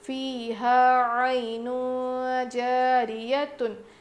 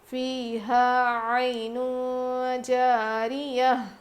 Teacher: یہاں پر گولتا پر وقف کرنا ہو تو وہ ہائے ساکنہ بن جاتی ہے ، اسی لیے میں یہاں پر جزم دے کر، ہا پر